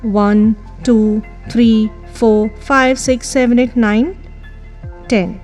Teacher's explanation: when we count 1 2 3 4 5 6 7 8 9 10 the last number always has a falling tone well all numbers have a rising tone also in the list